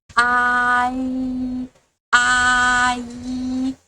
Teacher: we start the sound of a and then go to e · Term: compound finals